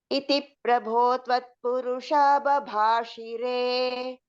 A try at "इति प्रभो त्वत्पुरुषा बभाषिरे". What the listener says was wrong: Shire, she should be short.